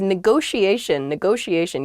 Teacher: there are two T's in this, but neither T is a hard T. They're both very soft, that sh sound, because they're followed by the I and another vowel, the she, a negotiation.